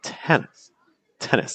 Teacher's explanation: See how that first syllable is very strong and the second syllable is very, very weak.